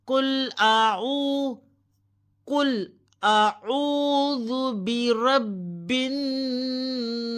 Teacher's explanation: قل اعوذ برب الناس، ناس، سین کی زیر کو ڈراپ کر دیں اور یہاں پہ وقف کریں اور سین کو مخرج کے ساتھ ادا کریں، اس میں سیٹی کی آواز آئے گی